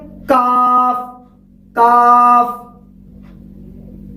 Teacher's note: قاف کی مخرج جو میں نے بتایا تھا لحاظ یعنی کوے کی متصل زبان کی جڑ اوپر کے تالو سے ٹکر کھائے. اب اسی طرح قاف کے مخرج سے ذرا منہ کی جانب ہٹ کر یعنی تھوڑا سا منہ کی طرف جھکا کر کاف کی ادائیگی ہوتی ہے. · کاف کی مخرج بھی ایسے ہی ہے, زبان کی جڑ جو ہے اوپر کے تالو سے ٹکر کھائے, لیکن فرق اتنا ہے یہ تھوڑا سا منہ کی طرف حصے سے ادا ہوتے ہیں